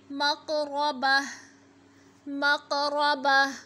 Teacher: क़ाफ़ हरूफ़ क़लक़ला है तो क़लक़ला करेंगे, रा पे ज़बर है तो मोटा पढ़ेंगे